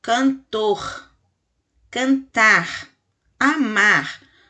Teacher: tá no final da palavra e aí a gente arranha a garganta para falar o r